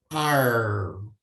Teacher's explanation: há uma pronúncia bem acentuada desse R como um som retroflexo com a curvatura da língua para trás, ficando aí o chamado R caipira.